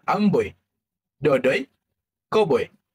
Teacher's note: Huruf vokal I yang berbunyi E yang mana lidah akan bergerak ke hadapan dan naik dan bibik akan diregangkan seperti senyuman ringan.